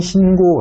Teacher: 이 경우에는 된소리 되기 없이 신고 라고 발음을 합니다